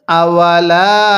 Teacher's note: পড়ার সময় গলার মধ্যে হালকা চাপ দিয়ে পড়লে আইনটা সহি শুদ্ধ উচ্চারণ হবে